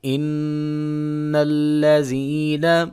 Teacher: نون مشدد ہے، لہٰذا یہاں پہ کیا کریں گے؟ یہاں پہ غنہ کریں گے